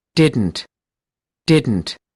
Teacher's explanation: a kind of uh T sounds that is put to the nose